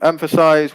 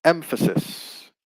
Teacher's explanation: So the stress stays in the same position, first syllable